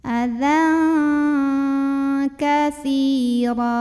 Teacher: Si mad tabi'i karena ada ya sukun yang didahului baris kasrah. Maka sa yang kasrah panjangkan 2 harokat.